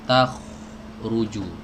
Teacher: Huruf kha keluar dari tenggorokan bagian atas ya, dan dia punya sifat isti'la. Jadi nggak boleh tipis.